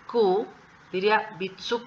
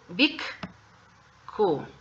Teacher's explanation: el sonido consonante K se va a trasladar al pequeño tsu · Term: doble consonante